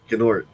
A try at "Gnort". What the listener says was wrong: No, it's pronounced Nort. G is silent. Anytime you have a G and an N together, the G is silent.